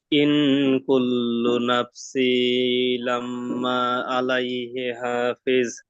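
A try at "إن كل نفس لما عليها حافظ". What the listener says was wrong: নাফসি নয়, নাফসিল। সিন গিয়ে যুক্ত হবে লামের সাথে, লামের উপর কি আছে? তাসদিদ। এই যে তাসদিদ আছে, এই যে এই তাসদিদ কে দুবার পড়তে হবে।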